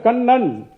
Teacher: பல்லுக்கு அடியில முதல்ல தொடும் கண், அப்புறம் பின்னால போய் அந்த வாயோடைய ரூஃப்ல ஒரு வாட்டி தொடும் கண் நன். இதுக்கு பேரு டென்டல் ரிஃப்ளெக்ஸ்.